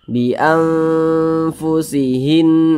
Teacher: Karena makharijul huruf nun dan huruf fa ini dia di tengah-tengah, tidak terlalu dekat, tidak terlalu jauh, tapi di tengah-tengah, maka dinamakan awsat. Jadi ketika kita mengucapkannya itu dibaca samar, kemudian juga didengungkan. Nah, jadi karena dia awsat, maka kadar ikhfanya itu ya seimbang, dia di tengah-tengah. · Nah, jadi karena dia awsat, maka kadar ikhfanya itu ya seimbang, dia di tengah-tengah. Antara samar dan dengungnya tuh dia seimbang di tengah-tengah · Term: ikhfa hakiki awsat